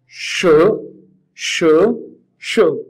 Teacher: rising tone which we call second tone